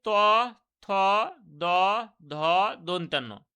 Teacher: এবং এই পাঁচটি ব্যঞ্জন ধ্বনি যেহেতু আমাদের দন্ত থেকে মানে দাঁতের সাহায্যে এগুলো উচ্চারিত হয় এই ব্যঞ্জন ধ্বনিগুলো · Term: দন্ত ব্যঞ্জন ধ্বনি